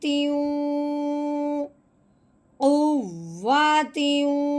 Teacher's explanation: اب ہم نے تا کو واؤ کے ساتھ ملانا ہے. اس کے ساتھ ساتھ ہم نے غنہ کرنا ہے